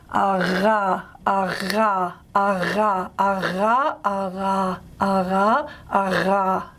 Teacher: I'm alternating between a more approximant version and a more fricated version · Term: voiced velar fricative